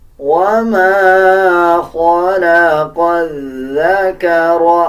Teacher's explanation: خا کو پر یعنی موٹا پڑھا جائے گا، اس قاف کو بھی موٹا پڑھا جائے گا۔ قاف کو ذال کے ساتھ ملا کے پڑھیں گے، ذال سے پہلے جو لام اور الف ہے ان دونوں الفاظ کو سکپ کر دیا جائے گا، اور اس میں ذال کا مخرج صحیح ادا کیا جائے گا۔ · جب آپ ذال پڑھیں گے تو ذال نرم حروف میں سے آتا ہے، زبان کی نوک دونوں دانتوں کے درمیان لے کے آئیں گے، تب ذال صحیح ادا کیا جائے گا